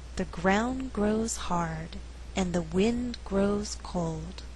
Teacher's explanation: in this slower reading all content words are stressed